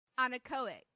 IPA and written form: ˌænɪˈkəʊɪk (anechoic)